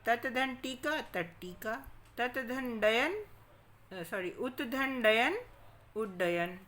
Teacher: ता के बाद यदि टा डा हो तो त टा डा में बदल जाता है। यानी ता के बाद टा है तो टा में बदल गया, और अगर ता के बाद डा आ गया तो डा में बदल गया।